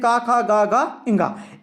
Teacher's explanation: अब कंठ से बोले जाने वाले स्पर्श व्यंजन होते हैं